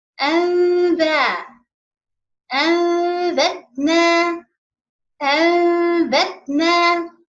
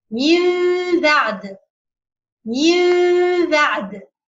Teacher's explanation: we will change this Noon to be Mim with separating in the lips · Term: Iqlab